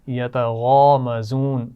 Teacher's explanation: غین کو موٹا پڑھنا ہے اور مزون زا کے مخرج کا بھی خیال رکھنا ہے